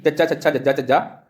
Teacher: ਤਾਂ ਤੁਸੀਂ ਬੋਲ ਕੇ ਦੇਖੋ ਤਾਂ ਤੁਹਾਡਾ ਜਿਹੜੀ ਜੀਭ ਹੈ ਉਹ ਤਾਲੂ ਨੂੰ ਛੂਹੇਗੀ, ਇਸ ਕਰਕੇ ਇਹਨਾਂ ਨੂੰ ਤਾਲਵੀ ਕਿਹਾ ਜਾਂਦਾ ਹੈ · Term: ਤਾਲਵੀ ਧੁਨੀਆਂ